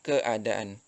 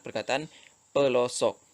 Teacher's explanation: Hentian glotis tersebut berada di tengah perkataan itu ke A.